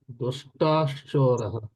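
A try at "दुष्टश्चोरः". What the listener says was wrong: దుష్టస్, దుష్టా లేదు అక్కడ, దుష్ట ఉంది. సో విసర్గ సకారము తర్వాత ష్టుత్వ సంధి.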